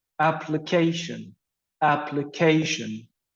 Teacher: so we have the stress on the third syllable